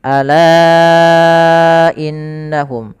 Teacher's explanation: Itu kita baca dengan bacaan mad wajib munfasil, yang mana hamzanya terpisah, kita panjangkan 4 harakat.